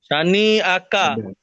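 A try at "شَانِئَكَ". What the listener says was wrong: সাথে টান দেন, সাথে করে টান দেন, শানি একা, একটা শব্দ।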